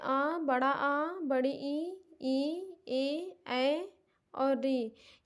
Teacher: दूसरा है आवृत्ताकार, जिसमें बड़ा आ, बड़ी ई ए ऐ और री, ये सब आवृत्ताकार में आते हैं, यानी इनको पढ़ने में हमारा होंठ गोल नहीं होता है।